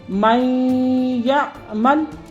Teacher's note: اب نون ساکن کا جو ما قبل میم ہے، میم یا کے ساتھ پڑھی جا رہی ہے اور نون میں ادغام، نون جو ہے وہ یا میں مدغم ہو رہا ہے۔ اس کو ہم کہیں گے ادغام بالغنہ۔